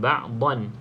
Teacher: Jelas bunyi nun yang mati. Sebab tanwin ni asalnya ada nun mati kan. Ba'dhan. Da dengan nun yang mati. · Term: bacaan yang jelas